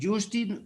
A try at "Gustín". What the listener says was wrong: Gustín. No, con G, Gustín.